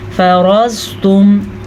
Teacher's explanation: فرضتم زواد کو پر پڑھ لیجیے گا، را کو پر پڑھ لیجیے گا کیونکہ را پہ زبر ہے اور زواد ہر صورت میں پر پڑھا جاتا ہے